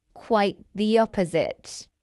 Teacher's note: did you spot the linking y sound in the phrase quite the opposite?